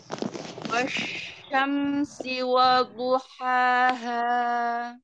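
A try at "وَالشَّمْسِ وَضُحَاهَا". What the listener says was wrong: Ini shin pakai tengah lidah, bukan pakai pangkal lidah. Maka suaranya tipis. Wasyamsi wadhuhaha. Wadhuhaha. Wadhuhaha. Wawunya tipis. Jangan terbayang dot dulu, wawunya selesaikan. Wa.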